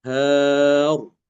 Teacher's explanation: Kalau fathah kan dia tebal rnya ya Har.